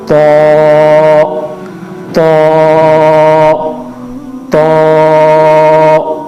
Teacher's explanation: تو کو ہم پڑھیں گے ہونٹ گول کر کے, تو تو تو. اب اس کے بعد ہے وا وا وا.